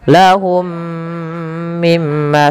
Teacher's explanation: Lahum mimma sama mim mati bertemu idgham mimi. Mim yang pertama masukkan mim kedua dan ditahan sepanjang 2 harokat.